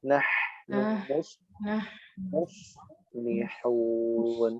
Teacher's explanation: Nahnu suara memanjang, nafas mengalir.